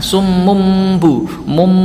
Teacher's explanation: dengan mengganti bunyi huruf nun sukun atau tanwin nya dengan bunyi mim sukun